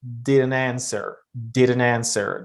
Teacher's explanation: They say didn't answer. So they connect the final t to uh the word answer because uh t is consonant, a is a vowel. So they try to connect it and it sounds like it's one word rather than two words. · Many speakers would link the final T of didn't to answer.